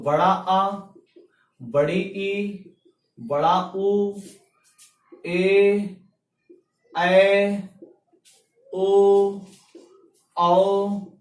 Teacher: एक मात्रा का समय ह्रस्व स्वर। इसी प्रकार 2 मात्रा का समय हमारे दीर्घ स्वर